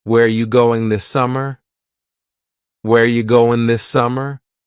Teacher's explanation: Where ya, which is you, going, dropping the G.